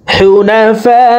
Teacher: ফা এখানে চার আলিফ টান